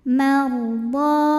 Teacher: Huruf ra sukun dibunyikan secara tafkhim sebab huruf sebelumnya berbaris fathah. Maka cara membunyikannya ditebalkan. Marda, mad tabi'i zahiri.